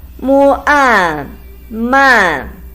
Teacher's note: combination of mu and an with the fourth tone